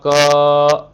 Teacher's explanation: क लंबे समय तक उच्चारण करेंगे तो एक समय के बाद उसमें कौन सी ध्वनि आ रही है, अ की ध्वनि आ रही है